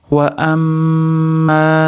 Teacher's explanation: Mim mana tashdidli kelganligi uchun komil g'unna, ya'ni 4-5 deguncha ushlab turiladigan to'liq g'unna beriladi.